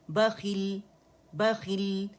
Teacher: لام کی آپ کو آواز جو ہے سکون کے ساتھ سنائی دے رہی ہے، کیونکہ لام کے مخرج پہ میں گئی ہوں. لام سکون کے ساتھ میں نے فتح کے ساتھ تو پڑھ لیا تھا، سکون کے ساتھ بھی اسے پڑھنا ہے.